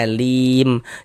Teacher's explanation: Dikarenakan huruf mim tidak dibaca panjang maka hurufnya kita sukunkan.